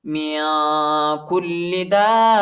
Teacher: وقف کی صورت میں تا کو ہا پر تبدیل کریں گے